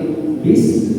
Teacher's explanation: Jangan bis, jangan seperti itu, tapi bis ya, harus ada sifat yang mengalir ya, suara yang mengalir dari huruf sin tersebut.